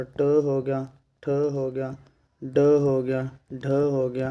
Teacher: इनका सबका उच्चारण स्थान मूर्धन्य है